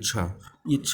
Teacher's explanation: छा जो आता है आपका चा वर्ग में, और चा वर्ग का उच्चारण स्थान हमने क्या बताया था आपको, तालु